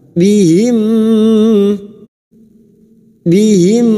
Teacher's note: memasukkan bunyi mim sukun kepada mim berikutnya disertai mendengung selama tiga harakat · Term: idgam Mimi